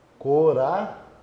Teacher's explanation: Lembrando que esse O tem som de U, então ele é a semivogal.